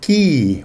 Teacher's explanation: So ki with a low tone, it means ride